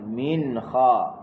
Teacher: Lepas tu nun mati jumpa dengan kha, baru kita izharkan baca. Jelas huruf nun.